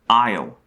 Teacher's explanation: The sound starts at ah and then slides to e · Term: diphthongs